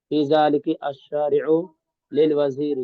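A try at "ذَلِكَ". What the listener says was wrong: ذالکی پہ نہیں، ذالکا تو ذالکا ہی رہے گا ہر حال میں بھائی، ذالکا کے بعد والا جو ورڈ ہے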